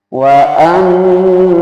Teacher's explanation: didengukan di rongga hidung